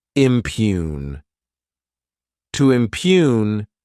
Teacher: this word has two syllables and the stress is on that second syllable